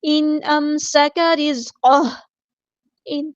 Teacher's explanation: نون ساکن کے بعد حمزہ آیا تو اظہار ہوگا